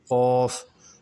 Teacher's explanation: یہ قاف، یہ موٹا بھی اور 3 الفی بھی ہے